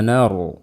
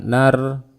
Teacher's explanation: ada ro mati sebelumnya fathah, dibaca dengan tebal. Nar, jangan nar.